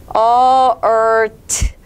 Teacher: t는요. 무성음, 바람소리, t 내주면 되겠죠.